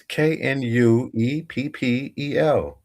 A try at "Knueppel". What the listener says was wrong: I think it's Nupal. I think the K is silent. It's definitely a silent K. It's Nupal.